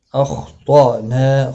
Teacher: خا بھی اور طا بھی دونوں کو پر پڑھا جائے گا، حمزہ ساکن کو جھٹکے کے ساتھ پڑھا جائے گا، نا الف مدہ ہے، ایک الف کی مقدار کے برابر کھینچ کر کریں گے، وقف کی صورت میں بھی اور ملانے کی صورت میں بھی۔